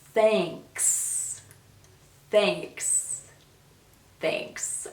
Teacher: this word i know can be difficult because of the th sound and the consonant cluster of the k and the s at the end